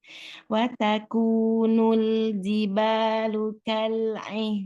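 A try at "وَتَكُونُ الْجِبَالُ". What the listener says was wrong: Jiba, ulangi, bukan ziba. Ji, bukan zi. Jibalukal. Orang jahar ya, jimnya itu ya. Masih ziba gitu. Jibalu.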